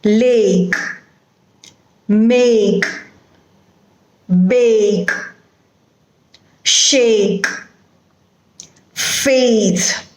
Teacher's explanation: you begin with one vowel sound and then you move over to the next vowel sound as if you are gliding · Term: vowel glide